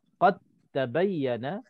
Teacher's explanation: seolah-olah dal itu tak ada, kita terus baca ta bersabdu. Qad tabayyana, tak boleh kita baca qalqalah. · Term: idgham mutajanisain